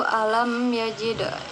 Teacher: mim mati bertemu dengan huruf ya, yaitu hukumnya izhar syafawi, yaitu dibaca dengan jelas.